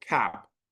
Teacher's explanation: it's a British a it is more open than the American a the American a is not as open as a British a